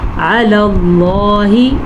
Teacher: لفظ اللہ کو پر پڑھیں گے. لفظ اللہ سے پیچھے والے حرف پہ زبر کی وجہ سے